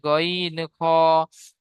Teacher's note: 3 নম্বর মাখরাজ হলকের বা কণ্ঠনালীর শেষ ভাগ হতে উচ্চারিত হয় গইন খ